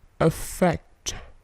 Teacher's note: Perhatikan bunyi T-nya itu memantul.